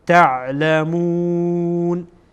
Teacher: عین را مواظب باشید از وسط حلق ادا میشه و درست آن را تلفظ باید کرد.